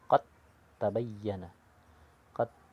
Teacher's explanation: dibaca langsung huruf ta tanpa membunyikan huruf dal ataupun huruf qalqalahnya